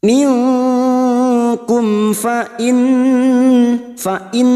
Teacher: mim sukun dibaca jelas tanpa mendengung karena mim sukun mendengung hanya bertemu dengan dua huruf yaitu huruf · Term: Idhar syafawi